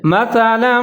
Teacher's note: اس کو سا پڑھنا ہے، آپ نے سیٹی نہیں بجانی، سین کی طرح نہیں پڑھنا